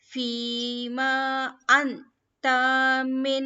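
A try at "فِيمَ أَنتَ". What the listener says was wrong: Okay. Ma लंबा नहीं करना है. Fima. Ma नहीं करना है. Fima anta. Fi मध्य. मध्य तबाई, right? Fi. जेर के बाद या सुकून आया है, सो इसे हम लंबा करेंगे. एंड अंता नून साकिन के बाद, नून जज़म के बाद आया है ता.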